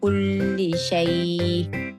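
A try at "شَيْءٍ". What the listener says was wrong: Syai'. Jangan berangin tak nak? Syai'. Syai'. Mati pada hamzah. Syai'.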